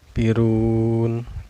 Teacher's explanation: cara bacanya dipanjangkan boleh 2 harkat, boleh 4 harkat, dan juga boleh 6 harkat ya. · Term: mad arid lisukun